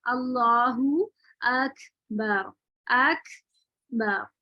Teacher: काफ साकिन होता है, अल्लाहु अकबर अकबर, तो अक इसमें जो है बहुत अच्छा हम्स आता है